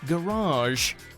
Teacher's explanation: A word with too many pronunciations for its own good. It's often pronounced with a long A at the end in America, sounding more like garage.